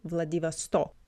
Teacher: with the stress on the last O